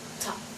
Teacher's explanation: when we pronunciate the word, there's like a bit of air coming out or pushing out · when we pronunciate it, there's going to be an aspiration of the t